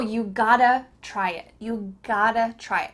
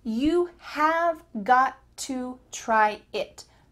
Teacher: So the full sentence could be, you have got to try it. But have got to is reduced to gotta. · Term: reduction